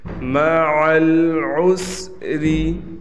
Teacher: عین کو عین ہی پڑھیں، عین کو یا نہ پڑھیں